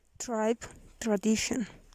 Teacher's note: Voiceless fortis post-alveolar affricate.